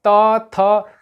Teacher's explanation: दांत और जिह्वा के सहारे बोली जाती है, इसीलिए इसे दंत वर्ण कहते हैं